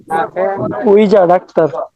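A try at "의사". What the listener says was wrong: উইজা না, এটা হবে কি, আবার উচ্চারণটা বলেন তো। যদি উইজা বলেন তাহলে এটা হয়ে যাবে চেয়ার, উইজা না, উইসা। হ্যাঁ, সা হবে লাস্টে সা। আর যদি যা বলে দেন তাহলে হয়ে যাবে চেয়ার।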